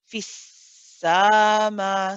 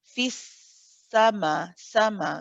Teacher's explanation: But be careful, the fatha is not prolonged. We don't want to say fissama, see sa becoming too long.